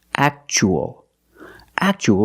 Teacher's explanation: and the second word we see Tua as a second syllable so the t is pronounced CH